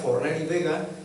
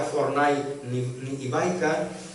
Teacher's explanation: Monoptongava els diftongs decreixents A i Au, que és un signe de modernitat evident